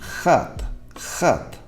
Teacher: But the first sound, the consonant at the beginning of the word hat, is often going to be pronounced as in khat, khat, by a Russian